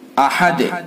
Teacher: دال کے اندر پھر قلقلہ کریں گے۔